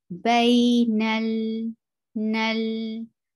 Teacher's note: Tawassut is medium flow of sound. You will not stop lam abruptly, but the sound of lam will go on for a little while.